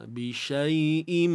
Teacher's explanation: Tanwin jumpa mim. Im, apa hukumnya? Idgham bi ghunnah kamil.